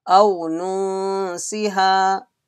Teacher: Sin came after Nun Sakin, there will be Ikhfa. Read with nasal sound, stretching one alif or two alif.